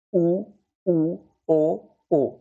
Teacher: वृत्तमुखी जिन स्वरों के उच्चारण में होठ गोलाकार होते हैं, होठों की जो आकृति है वो गोलाकार हो जाएगी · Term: वृत्तमुखी स्वर